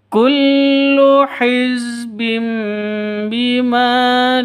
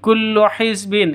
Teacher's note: ladahim hizbin Kullu hizbin ini pendek semua ya Kullu hizbim Bima tanwin bertemu dengan ba jadi tanwin bertemu dengan ba itu dengung ikqlab ya jadi ee mengganti sifatnya baab menjadi mim hiz Bim mingkem